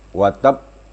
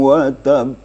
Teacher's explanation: Kalau kita berwakaf pada watab harus ada tasdidnya.